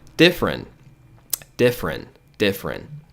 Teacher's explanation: você ignora esse E, fica different, different, different. Ouviu? Você não vai ter 3 sílabas, tá?